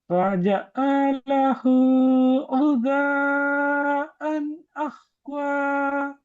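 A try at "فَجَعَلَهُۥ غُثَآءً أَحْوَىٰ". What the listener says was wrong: فجعله غثاء என்று உடைக்க வேணாம் சேருங்க فجعله غثاء أحوى அதான் அதெல்லாம் ஹை பிச் தானே போகுது குறைய மாட்டேங்குது فجعله غثاء أحوى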